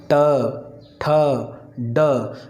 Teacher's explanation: इनका उच्चारण करते समय जीभ हल्का सा मुंह के ऊपरी हिस्से को स्पर्श करती है। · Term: मूर्धा